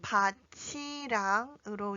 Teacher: 밭 뒤에 이어지는 이랑은 조사이기 때문에 구개음화가 일어나서 티읕과 이 모음이 만나 치로 읽어야 합니다